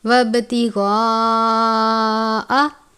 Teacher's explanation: فتنتی وابتغاء، با پر قلقلہ کرتے ہیں، یہاں پر بھی غین ہے، بڑی مد ہے، 5 الف کے جتنا لمبا کریں گے، غین کو پر پڑھیں گے۔